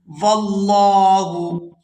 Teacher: لفظ اللہ کے لام کو پورا ادا کیا جائے گا کیونکہ لفظ اللہ کے لام سے پہلے زبر ہے